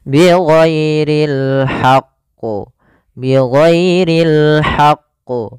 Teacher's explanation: karena dia ada huruf tasydidnya, ditekan dulu qafnya baru ditasydidkan. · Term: qalqalah kubra